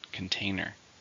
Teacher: How many syllables are in container? 3, stress on the second.